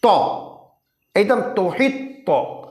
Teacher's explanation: है जब त हम बोलते हैं ना सुकून के साथ तो हमारी जबान जो है फैल कर के तालू में जाकर के चिमर जाती है